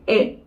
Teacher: Então aqui vai ficar E. É um I misturado com E. Você apenas vai falar o I e abrir mais a boca. E. Aí vai ficar hit. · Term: vogal curta